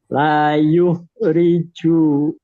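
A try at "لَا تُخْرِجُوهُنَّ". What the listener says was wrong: Titik di atas tak bukan yuk.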